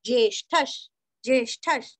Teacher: प्राणो ज्येष्ठ ज्येष्ठ नहीं करना सिर्फ ज आधा ये जे ष्ठ का उच्चारण भी अच्छे से करके विसर्ग का उच्चारण आधा श करना है